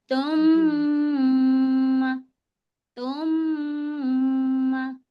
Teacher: हम मीम की आवाज को नाक में रोकेंगे। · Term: गुना